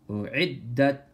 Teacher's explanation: Hamza is soft, ayn is harsh. أُعِدَّتْ And hold on to the dal for a moment.